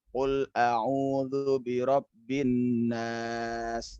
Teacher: Bin nas pasti itu masuk kepada jali ya. Tapi kalau anak kurang dalam dengung, qul a'udzu birabbin nas ya, bin nas hanya kurang panjang.